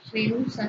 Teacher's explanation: Rehúsa sí lleva tilde y forma un hiato, la unión de una vocal abierta con una vocal U que es tónica.